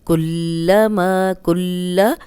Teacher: اب لام پہ شد ہے تو اس کو 2 بار ادا کریں گے۔